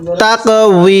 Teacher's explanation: এই শেষ হরফের পূর্বের হরফটি হলো মদের হরফ, এজন্য আমরা এখানে 3 আলিফ টান দিব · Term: মধ্যে আরজি